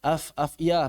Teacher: pita suaranya enggak bergetar. udaranya berembus deras